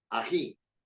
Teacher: tiene el tono de voz más fuerte en la última sílaba en la i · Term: aguda